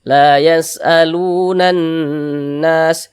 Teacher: Ini huruf yang memiliki harokat dhammah ini dibaca panjang. Sehingga lu dibaca panjang. Mad tabi'i panjang 2 harokat.